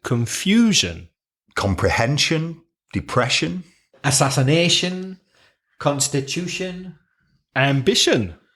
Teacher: n so shun for example confusion comprehension depression assassination Constitution ambition so all of those words stress the penultimate syllable the one before last